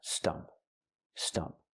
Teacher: When I say stump, I'm using the short sound like cup and up. It's a relaxed and closed sound.